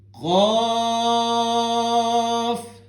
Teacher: مد بنا ہوا ہے، ہم نے اس کو سٹریچ کرنا ہے 3 الف کے برابر